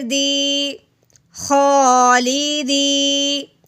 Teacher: جہن، نون زبر نا، جہننا، میم زبر ما، جہنما، خو کھڑی زبر خو، لام زیر لی، خولی، دال یا زیر دی، خولیدی۔ یا ساکن سے پہلے زیر ہے اس لیے ہم نے اس کو ایک الف کے برابر لمبا کیا ہے